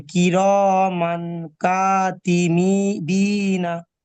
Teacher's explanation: এই তানবিনের আওয়াজকে নাকে তুলে এক আলিফ পরিমাণ গুণনা করে পড়তে হবে